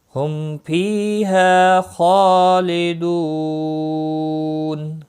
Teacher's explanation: ہم میم ساکن کے بعد پھا آیا ہے، اظہاری شفوی ہوگا، فی ہا دونوں حروف مدہ میں سے ہیں، یا مدہ اور الف مدہ ایک ایک الف کے برابر کھینچ کر پڑھیں گے۔ خ مستعلیہ ہے، پر پڑھا جائے گا، اس کے اوپر کھڑی زبر ہے، ایک الف کے برابر کھینچ کر پڑھیں گے۔